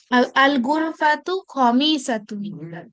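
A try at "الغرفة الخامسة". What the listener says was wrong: একালিফ টান হলে এটা আরো সুন্দর হবে। আল গুরফাতুল খামিসাতু।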